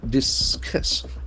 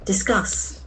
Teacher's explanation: Accent falls on the second syllable.